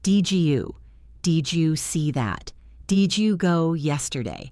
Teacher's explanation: The D meets the Y and makes a J sound.